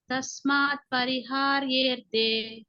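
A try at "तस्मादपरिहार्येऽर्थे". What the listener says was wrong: కాదు ద పలకండి. తస్మాదపరి. విడదీస్తే తస్మాత్ అపరిహార్యే, కాబట్టి కలిపినప్పుడు తస్మాదపరిహార్యేర్థే.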